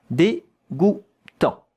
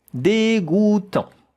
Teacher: A-N, en, it's a nasal vowel. A bit of air has to come here out of your nose when you pronounce it.